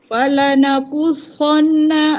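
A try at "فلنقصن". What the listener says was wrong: Dengung sikit ya. Nun syaddah. Falanakushonna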